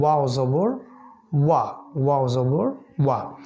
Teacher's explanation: তারপর আমরা শিখেছি দু ঠোঁট গোল করে যেটা বলতে হয় ওয়াও